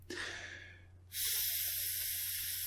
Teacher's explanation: the F sound is unvoiced because there's no vibration when you produce the F sound